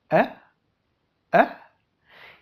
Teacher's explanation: la lengua está en una posición neutra, no va ni hacia adelante ni hacia atrás, se queda en medio